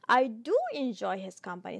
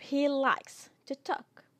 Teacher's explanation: stress is on do, right? Do is stressed. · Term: emphatic do